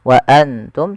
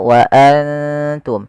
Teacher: kita samarkan nunnya kepada huruf ta dan ditahan dua harakat